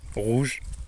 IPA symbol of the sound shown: ʁ